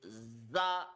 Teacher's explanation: And you will use force in reading this letter. There is the Z sound in it, and it has a kind of a whistling sound. So, it should be read with force.